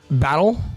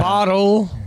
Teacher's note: when we say anything with T's, we say them like D's